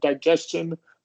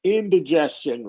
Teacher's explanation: instead of digestion with a long I, it turns into indigestion, where it becomes a schwa